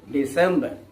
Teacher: the stress here falls on the second syllable of the word December